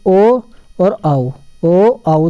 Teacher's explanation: ओ आउ दोनों के दोनों किससे बोले जाते हैं, कंठ प्लस ओष्ठ से बोले जाते हैं